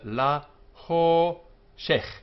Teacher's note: The accent is on ho, so shech is closed, unaccented, and so this vowel is short.